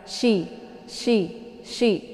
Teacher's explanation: Letak posisi makharijul hurufnya yaitu di tengah lidah dengan sejajar dengan langit ya. Langit yang keras.